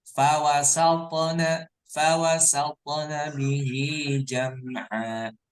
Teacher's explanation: Kemudian di sini juga di ayat kelima ingat ya bahwa to ini bagian dari qalqalah, maka harus membal, mantul. Fawasat, fawasat, bukan fawasat bacanya.